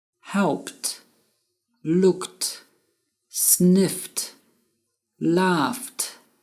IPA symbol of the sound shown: t